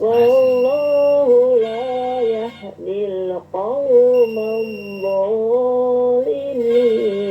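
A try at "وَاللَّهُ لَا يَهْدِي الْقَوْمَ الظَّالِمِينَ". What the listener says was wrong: Zonya berapa harokat? Zonya? 2 harokat saja. wallah kepanjangan ya.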